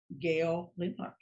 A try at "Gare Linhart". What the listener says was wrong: Gare Linhart. Got that R and L confused.